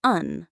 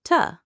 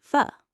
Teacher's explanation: Many small words like and, to, for, often reduced. For example, and becomes un. To becomes t. For becomes fu. So instead of saying and clearly, I say un. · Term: weak forms